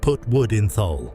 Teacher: Dropping the definite article to a T or a glottal stop is a well-recorded Yorkshire feature